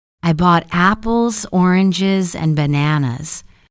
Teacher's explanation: Neutral intonation. When your tone stays even, often for lists or explanations.